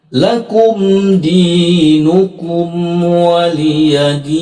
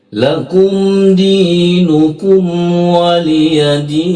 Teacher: maka itu adalah hukumnya izhar syafawi dibaca jelas di bibir